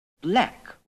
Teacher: The RP TRAP vowel could sound very like the modern DRESS vowel.